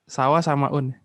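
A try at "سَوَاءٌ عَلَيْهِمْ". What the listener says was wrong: Nah, Ana sedikit ini ya, mengoreksi ya. Sawaun itu satu kata. Sawaun alaihim. Ya, jadi katanya adalah sawaun dan alaihim.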